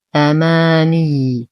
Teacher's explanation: ننتبه كثيرا لتشديد الياء، ولو وقفنا على الياء نعطيها نبرا بسيطا